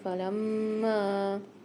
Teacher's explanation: تو یہاں پر ہم غنہ کر کے پڑھیں گے نارم فلما، میم کے اوپر مشدد آ رہی ہے اور چھوٹا والا مد آ رہا ہے، تو یہاں پر ہم 3 الف کی مقدار کھینچ کے پڑھیں گے